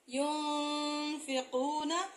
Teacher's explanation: یا پیش نون یون، فا زیر فی، یون فی، قاف پیش واو قو، نون زبر نا، ينفقون، یعنی آپ کا جو غنہ ہے وہ پورا ادا نہ ہو، وہ آپ کے منہ کے اندر لہراتا رہے، گونجتا رہے، تو وہ نرم غنہ کہلائے گا۔